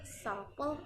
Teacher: The stress is placed in the first syllable sample